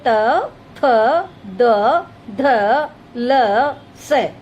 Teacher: दंत, जिन व्यंजनों का उच्चारण दंत पंक्ति से होता है उन्हें दंत व्यंजन कहते हैं। उनके उच्चारण में जिह्वा की नोक ऊपर की दंत पंक्ति का स्पर्श करती है, जैसे त, थ, द, ध, ल, स।